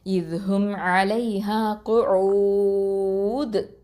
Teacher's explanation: இந்த தால் சுக்கூன் வச்சதுனால அங்கே கல்கலா குப்ரா பண்ணணும்.